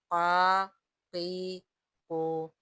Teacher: زبان کی جڑ اور تالو کے نرم حصے سے قاف ادا ہوگا۔ قاف زبر قا، یہ موٹا قاف ہے۔